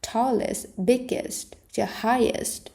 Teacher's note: big đuôi est không bao giờ mang trọng âm nên đừng đọc là it's thay vì đọc là east.